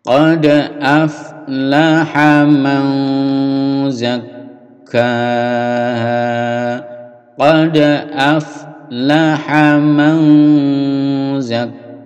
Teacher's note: Man ini ikhfa, ditahan. Mau ada dengungnya.